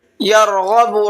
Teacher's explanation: را کو پر کر کے پڑھنا ہے اور غین کو بھی پر کر کے پڑھنا ہے